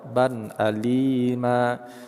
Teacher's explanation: huruf ba berhakat tanwin bertemu dengan alif, nama adalah izhar, kita jelaskan cara bacanya tanpa ada dengung